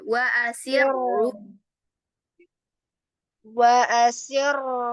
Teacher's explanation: untuk ro yang dia itu butuh ro tebal ya, maka dari awal langsung angkat itu pangkal lidahnya.